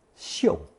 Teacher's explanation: producing fourth tone xiu, a verb meaning to sniff or smell something